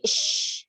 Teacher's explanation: Hurufnya sh. Menyebar tafasyi.